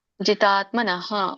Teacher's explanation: ಅಲ್ಪವಾಗಿ ವಿಸರ್ಗ ಹೇಳಬೇಕು ಪೂರ್ಣ ಹೇಳಬಾರದು